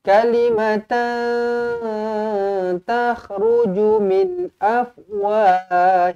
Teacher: Kalimatan, tanwin bertemu dengan ta, ikhfa hakiki, dengungkan dua harakat.